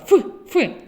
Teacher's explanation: нижня губа наближена до країв верхніх зубів а посередині залишається вузька щілина через яку проходить наше повітря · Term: звук ф